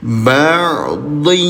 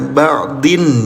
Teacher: Cara bacanya, tempelkan bunyi tanwinnya ke huruf ya, baru didengungkan selama 2 harokat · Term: idgham bigunah